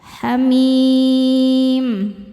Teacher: Mad tabi'inya ya sukun sebelumnya kasrah, huruf yang disukunkannya adalah huruf mim. Maka huruf mim ini panjang, boleh 2 atau 4 atau 6 harokat, asal konsisten dalam sekali baca. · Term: mad arid li sukun